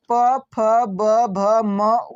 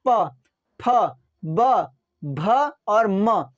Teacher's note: प फ ब भ और म ये टकराता है है ना दोनों ओस्ट आपस में टकराते इसलिए उसका उच्चारण स्थान ओस्ट है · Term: प वर्ग